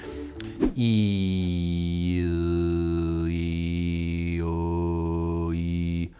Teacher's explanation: I can go from E like in feet to ooh like in boot by just moving my tongue back